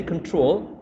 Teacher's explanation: when you say control, you actually are stressing the second syllable and not the first one